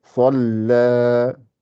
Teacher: le sad est gonflé, mais le lam n'est pas gonflé